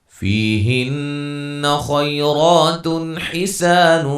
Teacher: نون مشدد پہ غنہ کریں گے